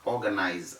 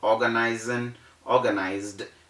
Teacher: it is s then you fall back to the rule so that s changes to z in the pronunciation